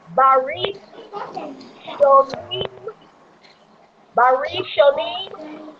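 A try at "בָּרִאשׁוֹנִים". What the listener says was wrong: Good job. All right.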